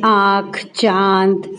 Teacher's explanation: इसको नाक और मुंह के द्वारा बोला जाता है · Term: चंद्रबिंदु